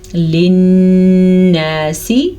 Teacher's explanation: نون کے اوپر غنہ ہو رہا ہے کیونکہ نون کے اوپر شد ہے